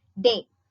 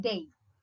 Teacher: the front of the tongue is first raised towards the hard palate to a height between half closed and half open. It then quickly moves to a position between closed and half closed